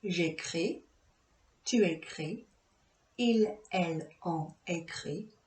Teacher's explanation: For je, tu, il, elle, on, the S or T isn't pronounced.